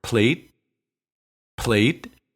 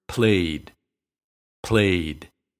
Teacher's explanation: It's short in the word plate, plate, and long in the word played, played. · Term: diphthong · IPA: [eɪ]